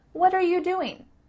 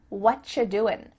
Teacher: what you're doing it sounds like a CH sound here and actually we've cut out completely the word are